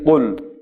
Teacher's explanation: قاف بڑا آئے گا، اگر حلق سے قاف نہیں لائیں گے اور وہ چھوٹا کاف ادا ہونے سے معنی بالکل تبدیل ہو جائیں گے